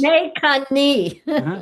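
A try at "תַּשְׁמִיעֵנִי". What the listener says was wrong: Tismacheni. Okay, so this here at the beginning, is not a tav, but I think you pronounced it as such.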